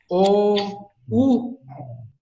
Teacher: Si tenemos una U y una O, decimos que están labializadas porque nuestros labios se ponen como redonditos. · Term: redondeo o labialización